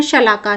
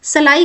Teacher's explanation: यहां पर श को स में बदल दिया गया है। इसीलिए यह जो है तद्भव शब्द कहलाते हैं।